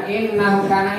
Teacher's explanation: Guna. Nah itu dengung. N-nya harus ditahan.